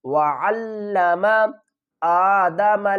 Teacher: حمزہ کھڑا زبر آ ہے، اس کو ایک الف کی مقدار کھینچ کر پڑھیں گے